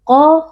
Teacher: Qa huruf tafkhim dibaca dengan tebal dan mengangkat pangkal lidah.